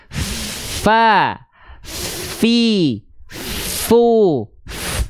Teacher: Mana makhraj asyafatain. Nah, huruf fa tuh, dia punya sifat hams juga, ya. Mengalir nafas juga ya.